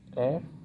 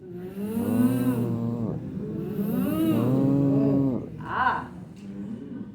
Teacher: la position égale, les dents sur les lèvres, un ne vibre pas et l'autre vibre.